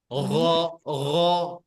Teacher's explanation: bukan di atas macam kita mau buang dahak, kho, bukan seperti itu, tapi bagian bawah